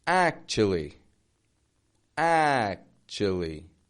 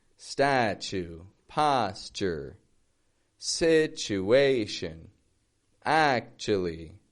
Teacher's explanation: the first syllable, the first unit of sound, is strong in the vowel. It stretches out in the vowel, right? The second, kind of fading. It's not necessarily always weak in statue.